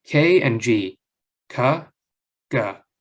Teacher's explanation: you had a constriction in the back of your throat sort of into pharynx both of those were in the exact same place